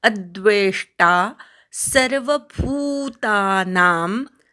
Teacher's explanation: अद्वेष्टा अवर आघात घ्यायचा, द्वेचा पूर्ण उच्चार करायचा, पोटफोडा श आहे.